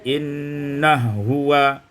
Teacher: Pada ayat yang ke-30, innahu huwa, idghamul ha fil ha, diidghamkan ha pada ha menjadi innahu huwa